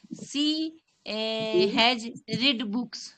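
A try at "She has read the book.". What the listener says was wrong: Yes ma'am, जब भी हम लोग हैज के साथ ना रीड स्पेलिंग सेम होता है, लेकिन इसका प्रोनाउंसिएशन होता है रेड हो जाता है। ही हैज रेड या she has रेड the book, रीड नहीं बोलेंगे।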